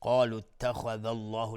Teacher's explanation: لفظ جلاله مفخم هست و تفخیم هست چون قبلش فتحه اومده